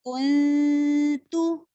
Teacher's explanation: اخفا کو موٹا نہیں آپ کریں گے، بلکہ اخفا مرققہ ہوگا، یعنی اخفا کو آپ باریک کریں گے. اور وہ باریک ساؤنڈ کیا ہوگا، کنتو.